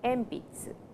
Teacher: so before P the sound n changes to M